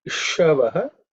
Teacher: the sha is cerebral sha. So the tongue should, as much as possible, point upwards.